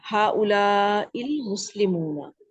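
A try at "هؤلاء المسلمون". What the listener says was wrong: ٹھیک ہے صحیح ہے.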